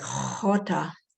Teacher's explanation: And another H is aspirated, like jota. It's not really a guttural sound, it's an aspirated sound.